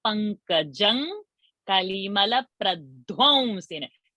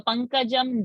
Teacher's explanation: anuswara is going to become ng, like in Ganga